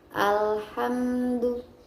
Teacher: Di sana ada hukum bacaan alif lam qamariyah. Karena ada alif lam yang bertemu dengan salah satu huruf qamariyah yaitu ha, maka hukum bacaannya menjadi alif lam qamariyah dan dibaca jelas